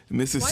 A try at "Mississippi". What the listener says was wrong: Why you say Mississippi so hard? Try to say all the S's.